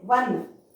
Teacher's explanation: wa sound we get, not o sound